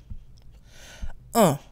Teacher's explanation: So first we have 1, which by itself is pronounced un. Un, with a nasal sound. We don't pronounce the N.